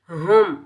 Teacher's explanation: हा के ऊपर पेश, हा को मीम साकिन के साथ मिलाएंगे, मीम का इजहार होगा, बगैर खींचे पढ़ेंगे। हुम, मीम की आवाज़ को हम जाहिर करेंगे, ना गुन्ना करेंगे ना इख्फा करेंगे